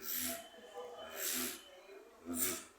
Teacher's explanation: the v that's labio dental that means your upper teeth are like biting or nibbling a a little bit your lower lip and you have to make a kind of vibration.